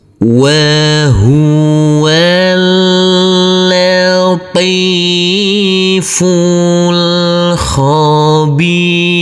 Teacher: Huruf wau langsung masuk ke huruf lam. Huruf alifnya kita anggap tidak ada. Jadi huruf wau kita baca pendek. Huruf lam cukup kita tekan dan kita tahan saja dengan dua harakat.